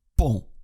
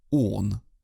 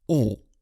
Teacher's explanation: Звук «он», как в слове «pont» – «мост», это носовой вариант закрытого «о». Берем русское слово «он», закрываем рот чуть больше – «он», а теперь убираем «н» – «о». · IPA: [õ]